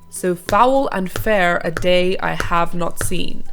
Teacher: pentameter it's a line of verse that has five iambs or five groups of two syllables the first unstressed and the second stressed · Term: iambic pentameter